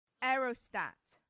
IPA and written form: ˈɛərəˌstæt (aerostat)